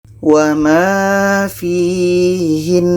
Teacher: nun ini tasydid, maka kalau berhenti kita dengungkan dulu, baru matikan nunnya